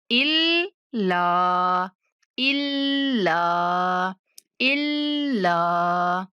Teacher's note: जब हमजा को लाम से मिलाना है, इल कहते हुए थोड़ी देर जुबान पे लफ्ज को रोक के रखना है, उसके बाद मुंह खोल के अदा करना है